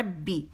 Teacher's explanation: با پہ میں نے جماؤ دیا کیونکہ اس میں جماؤ ہے اور را موٹی ہے